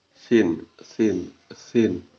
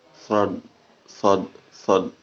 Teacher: Sin itu dibacanya eh, tidak tebal, tetapi sod itu dibacanya tebal atau disebut dengan itba. Dan sin itu dibaca dengan invita.